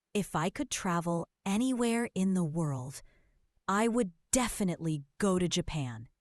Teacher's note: Notice the pause after anywhere in the world.